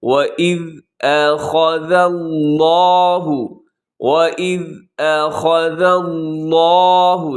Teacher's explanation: لفظ اللہ موٹا ہے کیونکہ اس سے پہلے ذال کے اوپر زبر ہے، اسے زا نہ پڑھیے گا، اخذ اللہ غلط ہو جائے گا۔